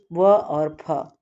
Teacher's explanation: दंतोष्ठ, निचले होठों और ऊपर के दांत से व और फ